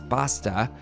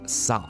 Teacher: Words like pasta or saw are pronounced with a more Spanish-sounding A sound. So pasta becomes pasta and saw becomes sa.